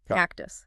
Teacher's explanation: >> But it's really about syllable structure. In cactus, the T starts the second syllable, cactus. It's in the onset. In English, onsets get aspirated.